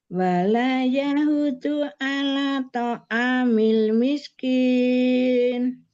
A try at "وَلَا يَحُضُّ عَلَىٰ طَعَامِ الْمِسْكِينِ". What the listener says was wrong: Masih naik. Wala yahuddu ala ta'amil miskin. Rendah suaranya ya.